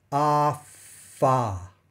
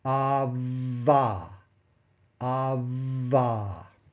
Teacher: Okay, if you felt that there's no vibration during the F, I want you to do the same thing, but note that the vibration is going to go all the way through the V sound. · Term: voicing